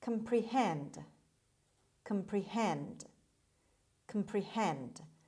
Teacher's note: the stress is on the last syllable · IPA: /ˌkɑːmprɪˈhend/